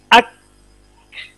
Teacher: काफ की आवाज बंद हो जाएगी लेकिन सांस जारी रहेगा। अक, थोड़ी देर के बाद सांस टूटेगा।